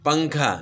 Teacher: تو اس کے اندر نون پڑ جاتا ہے لیکن چھپ جاتا ہے. اور وہ جو ہے نا اسی کو اخفاء کہتے ہیں کہ چھپانا.